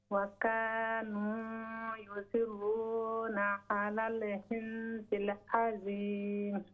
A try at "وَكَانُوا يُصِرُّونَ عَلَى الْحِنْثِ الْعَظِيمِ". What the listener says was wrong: Is it ضاء? ضاء is heavier than ذال.